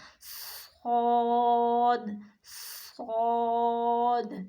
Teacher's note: اسے خوب موٹی آواز میں پڑھنا ہے، بھاری آواز میں